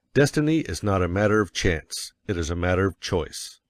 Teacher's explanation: Of course, you will want to emphasize destiny, for it is the principal idea in your declaration. And you will put some emphasis on not, else your hearers may think you are affirming that destiny is a matter of chance. · And you will put some emphasis on not, else your hearers may think you are affirming that destiny is a matter of chance. By all means, you must emphasize chance, for it is one of the two big ideas in the statement. Another reason why chance takes emphasis is that it is contrasted with choice in the next sentence.